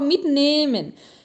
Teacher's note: Esse H eu não ouço, ele está alongando a vogal.